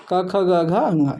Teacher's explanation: कंठ से जो निर्मित हो रहे हैं या कंठ के द्वारा जिन व्यंजनों का उच्चारण हो उन्हें क्या कहते हैं, कंठी कहते हैं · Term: कंठी व्यंजन